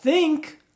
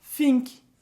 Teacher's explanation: ao invés de falar o TH, trocar ele pelo F